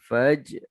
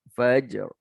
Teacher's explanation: Ada qalqalah. Langgar sikit ra.